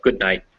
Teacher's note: what's actually happening is i'm blocking with a with my tongue instead of my throat